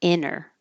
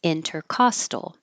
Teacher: for INTER, for anything like internet, intersection, you can say it without the T, inner, here, without the T, intercostal.